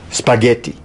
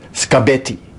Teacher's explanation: In spaghetti, the P is voiceless and the G is voiced, but in scabetti, as she said it, the K is voiceless and the B is voiced. So it's in this case as if the feature voice has moved from one sound to the next.